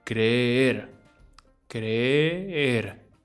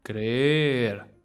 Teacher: It's almost like we go down a little bit and then we go back up.